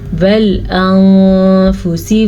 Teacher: नून साकिन के बाद फ़ा हरूफ इख्वा में से आया हुआ है तो इख्वा का कायदा हो रहा है। छुपे गुन्ने के साथ इस नून को हम पढ़ेंगे।